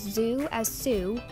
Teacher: replacing the Z with s because Z doesn't exist in Spanish